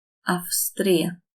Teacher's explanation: S does not make the vocal cords vibrate, so this is a F.